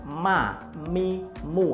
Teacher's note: Bibirnya pasti mengatup terlebih dahulu, menutup terlebih dahulu. Ini karena makhraj mimnya itu berada di bibir.